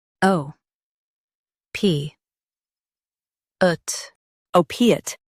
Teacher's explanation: Stress O and keep piate soft.